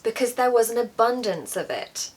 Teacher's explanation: I'm also stressing the word abundance because it's a word that exaggerates. We often stress exaggerating words.